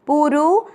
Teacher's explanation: पू की मात्रा बड़ी है लंबा खींचना है। रू की मात्रा छोटी है